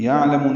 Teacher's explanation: عین ساکن پہ اظہار، لام کو جلدی پڑھنا ہے، میم کو لمبا کرنا ہے